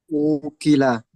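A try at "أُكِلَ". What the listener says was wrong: Ukila, bagus sekali.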